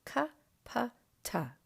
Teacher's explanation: And they are voiceless. There's less power coming to those sounds from the throat, and most of it's up in the head. Add to those a little bit more work coming from the voice, and you get the voiced letters, g, b, and da.